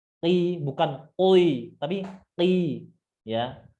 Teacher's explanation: ketika berbaris kasrah, huruf qaf berbaris kasrah itu dikurangi ketebalannya.